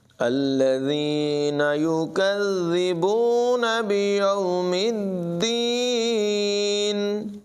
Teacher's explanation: ذال کو دونوں جگہوں میں بغیر سیٹی کے پڑھیں گے